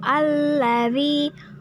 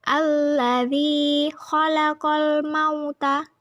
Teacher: Pada ayat kedua yaitu alladzi merupakan hukum bacaan alif lam samsiah karena huruf lam bertemu dengan huruf samsiah yaitu lam, maka dibacanya idgham atau masuk ke huruf lam. Zi merupakan hukum bacaan mad tabi'i atau mad asli karena huruf dzal berharokat kasroh bertemu dengan ya sukun dan setelahnya tidak bertemu hamzah, sukun, waqaf, dan tasjid.